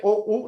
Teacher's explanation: con la O, U, nuestra lengua se contrae, O, U serán vocales posteriores